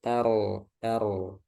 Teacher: rok sukun sebelumnya fathah tebal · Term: Roknya tebal